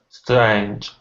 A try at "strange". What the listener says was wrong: A. Make sure you open your mouth wide. A. Don't mumble.